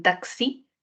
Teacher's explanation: la x como en taxi tiene dos valores k s